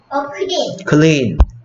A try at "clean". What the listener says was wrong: clean이 아니고 clean. L은 L답게 소리해야죠.